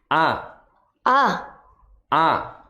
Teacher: Hamzah atau Alif nah di mana makhrajnya ada di tenggorokan bagian bawah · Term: huruf halqi